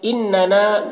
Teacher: نون مشدد یہاں پر غنہ ہوگا